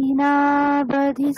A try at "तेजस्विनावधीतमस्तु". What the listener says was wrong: তেজস্বী দীর্ঘ হবে না, আমার উচ্চারণটা দেখুন। তেজস্বিনা, এটুকুনি বলুন।